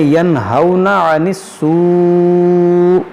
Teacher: یہاں پر نون ساکن کے بعد حروف حلقی ہے، تو یہاں پر ہم اظہار کریں گے، یہاں پر غنہ نہیں کریں گے